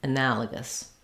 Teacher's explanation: We do have the same first three syllables, anala, and then we just change to the g sound, and again, a reduced vowel, schwa. You might even hear it as an I sound, analogous.